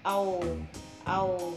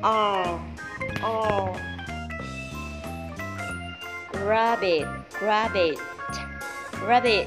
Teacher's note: Nó giống như là chữ O nhưng mà mình cong lưỡi lên đó các em